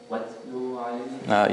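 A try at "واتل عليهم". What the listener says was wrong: You are making a mad after the lam.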